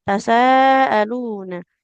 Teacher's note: Sin fathah mat tapi bertemu hamzah dalam satu kata yang sama. Maka di situ mat wajib ya harus 4 harokat.